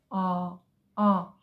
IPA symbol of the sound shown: ɒ